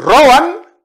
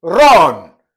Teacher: la diphtongue disparaît pour donner double voyelle